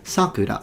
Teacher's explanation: If it's a name of a child, it's sakura, so high to low. But if it's the cherry blossoms, is sakura, the opposite, sakura.